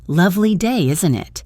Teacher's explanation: Notice the intonation goes down at the end as you expect the other person to agree.